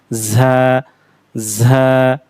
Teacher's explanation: এটা যা বলবো না অথবা যা নরমও পড়বো না, এটা হলো মাঝামাঝি। দুই দাঁতের মাঝখান থেকে শক্ত করে উচ্চারণ হবে, কিন্তু একটু বাতাস বের হবে।